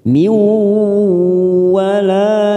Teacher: kasroh tanwin pada huruf mim bertemu waw, namanya idgham bi gunnah, kita tekan 3 ketuk